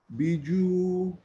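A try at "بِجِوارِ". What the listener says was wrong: No. Got a kasra the jim. BG.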